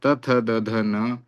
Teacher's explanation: यानी इनका उच्चारण दांत से होता है। त थ द ध न ये सब दांत से उच्चारण किए जाते हैं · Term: दंत्य